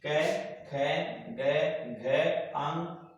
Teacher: क, ख, ग, घ, अंग, ए, आ, है और विसर्ग, इन सबको हम कंठे उच्चारण स्थान में शामिल करते हैं